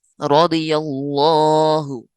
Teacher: را زبر ہونے کی وجہ سے موٹا، ضاد حروف مستعلیہ میں سے ہے، یہ تو ویسے ہی موٹا پڑھا جائے گا۔